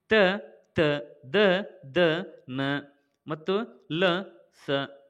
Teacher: ದಂತ್ಯ ಅಕ್ಷರಗಳು ಅಂತಂದ್ರೆ ಹಲ್ಲುಗಳ ಬಳಿ ಹುಟ್ಟುತ್ತವೆ